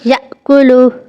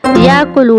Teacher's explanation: اب یہ دیکھیں، جیسے یأکلو، یہاں پر جھٹکا واضح ہوگا، حمزہ کے اوپر جزم ہے